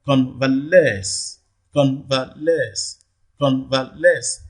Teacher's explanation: the primary stress falls on the last syllable, which is the third syllable.